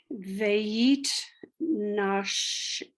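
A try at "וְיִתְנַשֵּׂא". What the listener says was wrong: Not sh. It's a sin.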